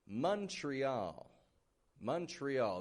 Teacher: That O that's in the beginning turns into a U.